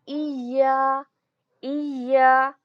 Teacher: या को हमें 2 बार पढ़ना है, या पर शद्दा आया है। इया, एक बार या को जज़म के साथ पढ़ेंगे ई, और दूसरी या को अलिफ के साथ मिलाकर पढ़ेंगे, अलिफ मद्दा इया, इया।